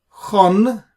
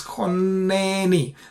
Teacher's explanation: So we split the nun into two because of the dagesh. It's called doubling or gemination. So essentially, the dagesh is nothing but two nuns.